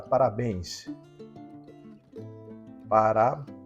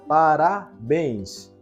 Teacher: A sílaba tônica é o bens. E ela termina em ENS.